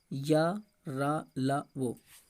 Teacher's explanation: और वह जो है हमारा ये अर्ध स्वर है। ठीक है, या तालु से बोला जाता है, रा मूर्धा से बोला जाता है, ला दंत से बोला जाता है और ला दंतोष्ठ से भी बोला जाता है। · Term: अंतःस्थ व्यंजन